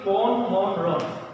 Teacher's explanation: উচ্চারণে মূর্ধন্য ন আসবে না, উচ্চারণে সবসময় দন্ত ন হয়ে যাবে